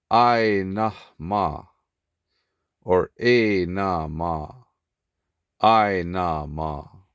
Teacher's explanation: The first syllable is higher note than the second and third. Each syllable is about a second, so one mantra is about 3 seconds long.